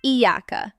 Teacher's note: That ya under the shada isn't one Y sound, it's a doubled yi. Say it weak and the meaning gets sloppy. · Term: mushaddad